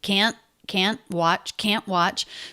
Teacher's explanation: there's a little break between can't and watch and that little break signifies to me a stop T · even though he's stressing that word making it longer he still doesn't release the T we almost never do that he makes it a stop T